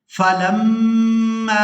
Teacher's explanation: फलम्मा मीम मुशद्दद पर गुना करेंगे, इसके बाद मीम को जब अपनी हरकत यानी ज़बर के साथ अदा करेंगे तो इस अलिफ मद्दा की वजह से खींच कर अदा किया जाएगा